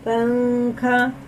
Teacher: نون ساکن کی آواز کو ناک میں چھپا کر پڑھنا چاہیے، نون کی نوک زبان تالو سے ہٹا کر، جیسے اردو میں پنکھے کے نون کو پڑھتے ہیں. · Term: اخفا